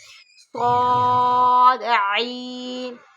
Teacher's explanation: صاد عین، صاد سیٹی کی آواز میں پڑھیں گے، موٹا بھی پڑھیں گے، عین حلق کے درمیانی حصہ سے پڑھیں گے